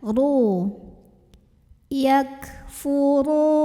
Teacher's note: Lalu berikutnya huruf ro-nya dibaca secara tafkhim karena ro-nya berbaris dhammah. maka cara bacanya ditebalkan, pangkal lidah dinaikkan.